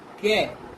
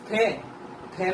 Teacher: कै, इसमें कम वायु जा रही है। खे बोलिए आप, खे में वायु ज्यादा निकल रही है। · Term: अल्प प्राण